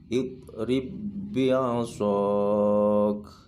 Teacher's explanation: ba yang pertama dileburkan kepada huruf yang kedua, ba yang kedua. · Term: idgham mutamathilain